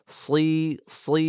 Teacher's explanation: এই নিচের এই দাঁতের পাটি এর আগা এবং পেটের সাথে আমাদের জিহ্বার আগাটা লাগবে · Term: মোটা